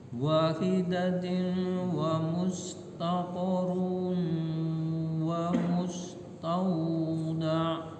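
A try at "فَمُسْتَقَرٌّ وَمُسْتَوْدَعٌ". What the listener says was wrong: Bukan wa, yang pertama fa. Yang kedua baru wa. Wahidatin famustaqarru wa mustauda'.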